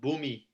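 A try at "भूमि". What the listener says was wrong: Ooh, it's buhmi, not boomy. Yeah, buh. Boomy. Ba, boo.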